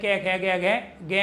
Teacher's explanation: क वर्ग का उच्चारण स्थान क्या है? कंठ है।